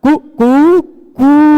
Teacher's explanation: पहले बार ह्रस्व रहता है, उसका फिर दीर्घ रहता है, फिर प्लुत रहता है, कु कु, फिर उससे भी बढ़ के कु, वो वाला 3 वाला, है ना, सुना होगा आपने।